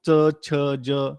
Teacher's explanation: च छ ज सगळे टाळूपासून होतो म्हणून यांना तालव्य म्हणतात